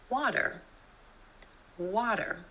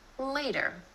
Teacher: The flap T is really just a D sound, and this flap T happens when T is in the middle of words in between two vowel sounds.